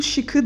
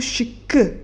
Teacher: Burada da bir K sesi daha türemiş olur.